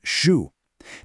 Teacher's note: First, that sh sound in shu. This is a retroflex sound. You have to curl the tip of your tongue back toward the roof of your mouth.